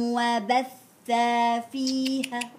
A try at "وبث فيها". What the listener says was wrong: ما فيش مد.